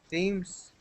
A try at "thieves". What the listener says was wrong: Look at my mouth for a second. Thieves. It's a V in there, isn't it? A letter V. Thieves.